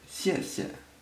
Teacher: First time it's pronounced in the 4th tone, the second a neutral tone, but that's only because it comes right after each other.